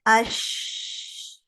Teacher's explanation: شین میں تھوڑا سا گیپ ہے, سلائٹلی مور گیپ ہے جیم کے مقابلے میں, تو یہاں سے شین ادا ہوتا ہے اش.